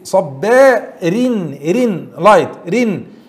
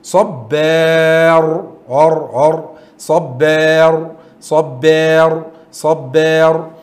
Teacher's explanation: You will say صبارين رين light رين. However when we are stop we are changing from التنوين with كسرة to a سكون and there is فتحة and مد before الراء. It will be heavy. We will say صبار ار ار.